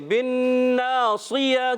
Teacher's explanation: نون مشدد میں ایک الف کا غنہ کریں گے, صاد کو موٹا رکھنا ہے